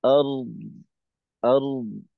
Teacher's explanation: রয়ের মাখরাজ থেকে রয়ের কাজ শেষ করে আওয়াজ চালু থাকতে থাকতে দদের মাখরাজে গিয়ে একটু আওয়াজটাকে রেখে তারপর শেষ করতে হবে